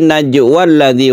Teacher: Kalau kita teruskan berarti najwa alladzi, wanya menjadi pendek